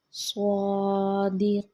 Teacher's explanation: سواد موٹا پڑھیں گے منہ گول کر کے